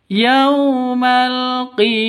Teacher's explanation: panjang dua ketukan ada Alif diawali dengan fathah mad asli